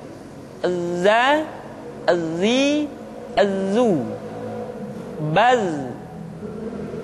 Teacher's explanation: Tetapi ingat, huruf za bersifat al-jahr. Artinya, ketika kita mengucapkan huruf za, suara kita mengalir, akan tetapi nafas tidak boleh mengalir. Contoh yang salah seperti ini, za, zi, zu.